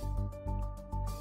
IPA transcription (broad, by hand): й’э